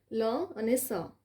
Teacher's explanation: હવે લ અને સ બોલી જુઓ. દાંતનું મૂળ સ્પર્શે છે. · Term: દંત્ય